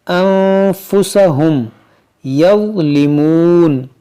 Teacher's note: نون ساکن کے بعد فا ہے، یہاں پر ہم اخفا کریں گے